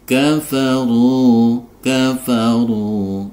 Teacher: harakat kafaru kafaru ini ada Ro berharakat dhomah dibaca tebal kemudian ada dhomah diikuti wau sukun sehingga dia harus dipanjangkan dua harakat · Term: Mad Thobi'i